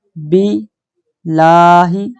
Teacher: یہاں اللہ کا لام باریک پڑھیں گے، موٹا نہیں پڑھنا، کیونکہ با پر زیر ہے۔ یہ دیکھیں آپ کو با کے نیچے زیر آ رہی ہے، اس لیے ہم یہاں پر جو اللہ کی لام ہے اس کو بالکل نرم آواز میں پڑھیں گے۔